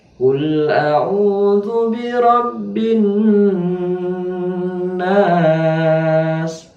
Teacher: Ditahan dulu nunnya, kemudian baru dilepaskan. Kira-kira ukuran 2 detik. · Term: gunnah musyaddadah